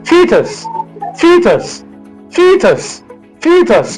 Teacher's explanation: The stress in this word falls on the first syllable.